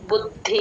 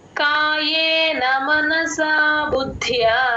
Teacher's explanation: బుద్ధి ద కింద ద ఒత్తు మహాప్రాణం య ఒత్తు అన్ని వినపడేటట్టు పలకాలి బు కి ద ని జాయిన్ చేసుకుంటే ద కింద ద ఒత్తు క్లియర్ గా వినిపిస్తుంది